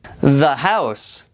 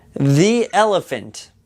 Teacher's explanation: si comienza con una consonante dirás the ahora si el sustantivo comienza con una vocal a e i o u ahí dirás di